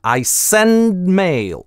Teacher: мы пытаемся выговорить там /d/, напрягаемся, но до релиза не доводим. И за счет этого напряжения /n/ удлиняется I send mail. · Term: безрелизное /d/